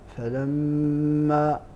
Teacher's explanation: الميم المشددة فيها الغنة